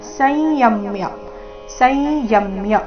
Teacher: ಸಂಯಮ್ಯ ಯ ಮೇಲೆ ಆಘಾತ ಬರಬೇಕು